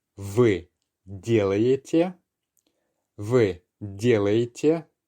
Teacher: We're not really making the ye sound, the penultimate ye sound, that clear. It merges and just becomes more of a y sound.